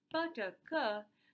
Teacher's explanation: you can say that they are the natural class of voiceless plosives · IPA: /p/, /t/, /k/